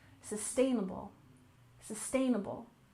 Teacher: sustainable development with a stress on the second syllable, sustainable